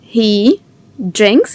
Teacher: DR make the sound j. So add a very soft j in between.